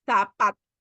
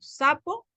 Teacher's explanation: En nuestro país no hay una diferencia en el sonido de la Z.